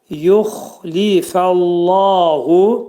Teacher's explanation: Xa hərfi qalın hərfdir. Xa hərfinin məxrəci boğazın yuxarısından çıxarılır.